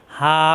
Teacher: কণ্ঠনালীর শুরু থেকে উচ্চারণ হা শব্দের শুরুতে থাকবে